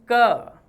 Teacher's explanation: आप देखें ध्वनि कम आ रही है, और अल्प प्राण हवा भी बाहर कम आ रही है